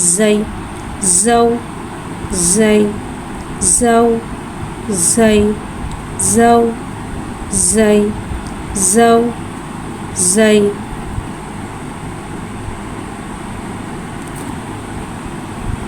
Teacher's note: जा को एक अलिफ यानी 2 हरकत के बराबर खींचे पढ़ेंगे। जा को सीटी के साथ ज़ाहिर करके पढ़ेंगे। जा के ऊपर ज़बर है, ज़बर को मुँह खोल के अदा करके पढ़ेंगे।